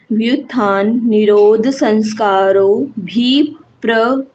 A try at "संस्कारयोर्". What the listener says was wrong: बस बस बस, संस्कारों नहीं है ये, संस्कार्योर।